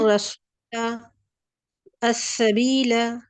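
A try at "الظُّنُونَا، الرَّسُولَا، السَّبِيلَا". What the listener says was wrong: آپ ابھی اس وقت اس پہ مد نہیں کر رہی نا، اس مد کے ساتھ پڑھیں، یعنی 2 حرکت ساتھ. الظنون، الرسول، السبیل.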